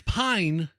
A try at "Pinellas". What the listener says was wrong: No, pie, P-I-E, like, you know, like eating a pie or 3.141, you know.